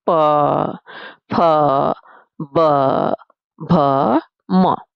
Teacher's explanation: जब उनका उच्चारण करते हैं तो हमारे होठों जो है वो हिलते हैं। जैसे आपस में मिल जाते हैं। हमने बोला प फ ब भ म ये सभी वर्ण जब हमने बोले तो हमारे जो होठ है बेटा वो कार्य करते हैं। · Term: प वर्ग